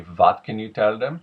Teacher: the W turning into something closer to a V. I'm sure there's some ends of the spectrum where it is a pure V.